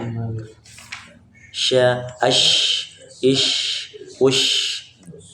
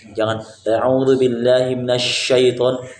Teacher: tersebarnya udara pada seluruh mulut ketika pengucapan huruf tersebut. Jadi banyak nafas atau udara yang mengalir.